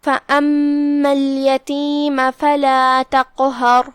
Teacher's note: کلمت فَأَمَّا میں یہاں جو کہ الف ہے اور اس پہ زبر ہے لہذا ہم حمزہ کو اوپر سے پڑھیں گے. پھر یہاں میم ہے اور اس پہ تشدید ہے لہذا 2 حرف کی مقدار میں میم کو ادا کرنا ہے